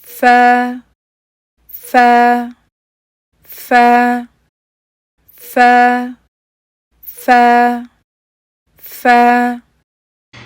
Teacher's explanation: चेहरे पे स्माइल आनी चाहिए हर्फ फाय की अदायगी के लिए हम ऊपर वाले दो दांतों को नीचे वाले होंठ के अंदरूनी तरफ जो है हम उसको रखते हैं